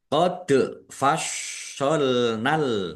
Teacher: dal sukun bacaan qalqalah dibaca memantul ditampakkan pantulannya. Shotnya dibaca double, ada tasdidnya, ditekan biar tampak doublenya.